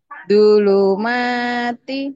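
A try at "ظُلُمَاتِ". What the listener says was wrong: bukan du tapi do zu zulum mati do zulumati bukan do bukan di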